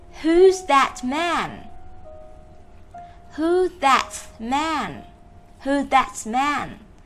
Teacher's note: Có thể nuốt được cái âm t ở sau từ that. Nhưng nếu mà đọc chậm thì chúng ta vẫn đọc cái từ đó ra, không cần nuốt các em nhé. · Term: nuốt âm